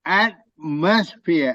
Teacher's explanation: the at is pronounced more than the rest of the syllables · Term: syllable stress